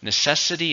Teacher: necessity stresses on the second syllable